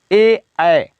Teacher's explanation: फिर नेक्स्ट है ए दै तो कंठ तालु, ए तो ए दो होगा, एक ए हो गया और एक ए हो गया, तो इसका उच्चारण दो स्थानों से होगा, एक कंठ से और तालु से। कंठ तालु दोनों साथ मिल करके इसका उच्चारण करते हैं